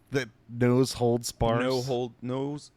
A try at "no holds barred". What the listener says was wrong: No holds barred. You start with nose. Nose hold barred.